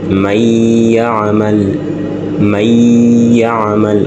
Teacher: owulira nti nuuni ebulidde mu yaa'u. Tetugambye man ya'mal nga bwe twasoma idhaar, wajja soma man ya'mal. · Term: idghaamu